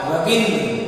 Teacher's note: दोनों ह्रस्व ई जब मिल रहे हैं तो ये दीर्घ हो जाएगा